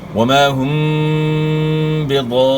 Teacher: میم ساکن کے بعد یہاں با ہے تو یہاں آپ نے غنہ کرنا ہے، یعنی اقلاب ہوگا، اخفاء ہوگا.